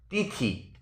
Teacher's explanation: এই তিথি শব্দটিতে দুটি দল আছে এবং দুটি দলই হচ্ছে মুক্তদল বা স্বরান্ত দল